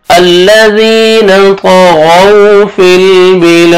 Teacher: ایک الف کے برابر آپ نے لام کو کھینچنا ہے اور دال وقف کی صورت میں دال ساکن ہو جائے گا اور حروف قلقلہ میں سے ڈبل ساؤنڈ آئے گا